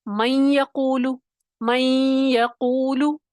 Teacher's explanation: یا جو ہے مشدد تو ہو گیا، اور نون نے اپنی صفت غنہ ختم نہیں کی. نون کی صفت غنہ ادا ہو رہی ہے، نون کی آواز آپ کو سنائی دے رہی ہے. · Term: ادغام ناقص